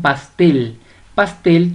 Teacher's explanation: pastel tiene el acento prosódico en la última sílaba o la mayor fuerza de voz en la última sílaba